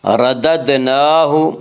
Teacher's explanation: دال میں قلقلہ ہوگا، دال حروف قلقلہ میں سے ہیں